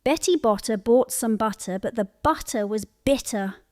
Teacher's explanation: With B, your vocal cords vibrate.